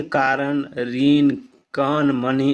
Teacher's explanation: मूर्धन का स्वतंत्र उच्चारण खोरठा में नहीं होने के कारण इसका प्रयोग नहीं होता है और इसके स्थान पर न का ही व्यवहार होता है